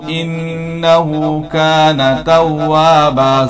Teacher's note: زبر کو جلدی پڑھیں، تھوڑا بھی نہیں. توابن ہے، دو زبر پر وقف کریں گے، ایک زبر کے ساتھ پڑھا جائے گا توابا.